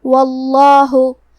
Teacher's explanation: یہاں حرف الواو پہ زبر ہے لہذا ہمیں لفظ الجلالہ مطلب کلمت اللہ کے لام کو موٹی آواز میں پڑھنا ہے